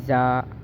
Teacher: زا میں سیٹی ہے، دونوں دانتوں کو ملا کر اور ان کو پیچھے سے زبان کی سختی سے زا ادا ہوگا